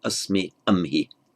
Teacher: And again, we see this metathesis, asmi, amhi, with the S becoming an H and swapping places with the liquid consonant